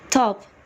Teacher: the realization of T in the word top is aspirated when they occur before stressed vowels at the beginning of syllables